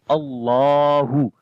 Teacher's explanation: تو اللہ کا نام ہے، اس سے پہلے زبر ہے، تو یہاں پر اللہ کے لام کو موٹا پڑھیں گے